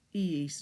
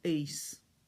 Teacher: When you get to eis, the two I's have to sound separately.